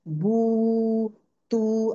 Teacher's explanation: वाव के लिए lips round होंगे, वोकल कॉर्ड ओपन रहेगा और लिप्स राउंड होंगे, in the same शेज as if we were saying the letter वाव। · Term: वाव मत